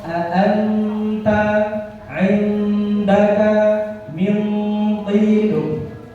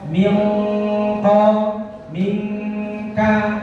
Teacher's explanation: maka dengungnya yang dominan adalah bunyi n daripada eng